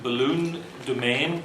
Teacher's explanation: words like balloon and domain having final stress